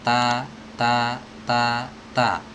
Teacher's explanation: Huruf ta itu ada di ujung lidah bertemu dengan pangkal gigi seri bagian atas. Ta. Ada sedikit hams tapi nggak boleh terlalu banyak ya karena dia berharokat ya.